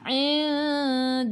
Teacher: sebelum lafzul jalalah ada baris atas kena baca tebal taghlid.